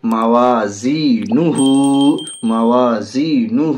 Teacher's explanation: ہاں کے اوپر الٹا پیش ہے، الٹا پیش برابر ہے واو حرف مدہ کے، الٹا پیش کو تھوڑا کھینچ کر پڑھیں گے